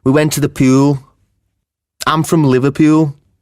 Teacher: the u sound is very distinctive and fairly elongated in words that end in l and is similar to the standard english vowel sound ooh in